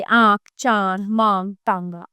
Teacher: अनुनास। जिस स्वर के उच्चारण में हवा मुंह और नाक दोनों से निकलती है और थोड़ी सी गर्म होती है। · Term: अनुनासिक